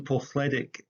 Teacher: The THL in Polthletic is a relic of the unvoiced L sound, spelt double L in Welsh.